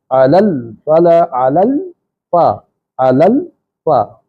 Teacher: اچھا یہاں ایک غلطی ہو رہی ہے، حی علی الفلاح، علی الفلاح اس طرح علی، یہاں کلکلا کر جاتے ہیں علی الفلاح. یہاں زبان جب تالو سے لگے لام پڑھنے کے لیے تو جڑ جائے اور فوری نہ ہٹے، اگلا حرف پڑھنے کے لیے ہٹے